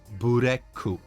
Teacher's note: they don't stop at k in black but they add a u at the end